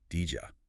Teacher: it just crashes the D sound and the Y sound together right in the middle. >> It just smashes them. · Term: J sound